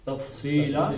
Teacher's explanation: سیٹی کی زیادہ آواز نہیں آنی چاہیے. سین کے مقابلے میں موٹا ہے. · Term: سواد کو موٹا